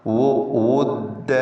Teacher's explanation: 2 ചുണ്ടിൽ നിന്ന് തന്നെ വാവ് വരാൻ ശ്രദ്ധിക്കുക